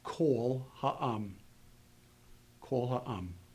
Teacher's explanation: Even though the first two letters comprise a separate word, Because it is hyphenated, it becomes part of the total package, and the total package is accented only once. That means that this first word is now unaccented, whereas it would be accented when it stands on its own. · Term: makaf